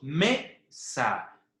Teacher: En la sílaba me, la cual es la sílaba tónica. ¿Por qué? Porque suena más fuerte. Y la sílaba sa es la sílaba átona, la cual no tiene elevación de voz.